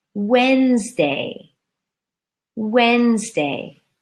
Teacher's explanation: so again three syllables changed to two syllables the D and E are out